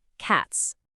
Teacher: Because the letter T in cat is a voiceless sound, meaning your vocal cords literally don't vibrate when you say it, it naturally takes a sharp, breathy S at the end. Your throat stays completely still.